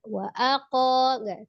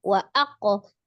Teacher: langsung disukunkan ke qof dengan tidak memanjangkan hamzahnya